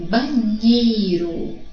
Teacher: observe que a sílaba nhei apresenta maior intensidade fonética, o som é mais forte. É por isso que o acento tônico da palavra banheiro, se houvesse um acento aí, é o nhei. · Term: sílaba tônica